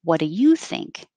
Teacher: What do changes into more casual whata.